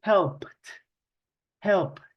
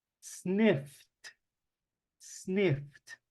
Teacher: la ed no la vamos a pronunciar como id, vamos a pronunciar la ed como si solo fuera una T